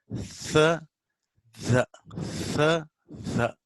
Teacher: the tongue comes out little and air flow is stopped, but still there is little gap, so air escapes. That's the reason why it is called fricative.